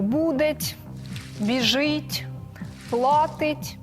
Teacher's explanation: збереіглася форма синові є форми дієслів у цій пам'ятці тому що Майже всі вони мають українську фонетичну форму це пом'якшені приголосні кінцеві